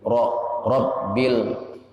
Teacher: ra besar ra tafkhim bacanya tebal